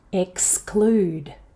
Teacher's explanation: Check the consonant cluster. This word has four consonant sounds in a row.